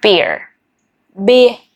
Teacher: beer, beer, without the R sound